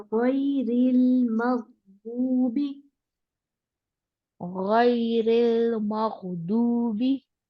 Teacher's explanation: रो नहीं मोटा करें, गैरिल मगदूबी